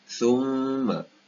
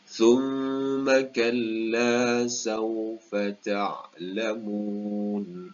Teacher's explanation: Perlu berhati-hati kepada sebutan mim bertanda sabdu ini. Wajibul gunnah, perlu dibaca dua harakat dengan bacaan dengung.